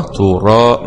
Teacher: مع تفخيم الراء لأن الراء مفتوح. ألف سكون مضي طبيعي مع تفخيم الألف لأن الألف جاء بعد حرف مفخم وهو الراء، تو راء.